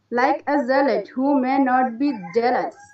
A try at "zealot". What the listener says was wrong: Zealot, yes.